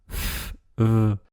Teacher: les labiodentales, entre la lèvre supérieure et les dents du bas.